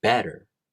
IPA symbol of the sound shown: ɾ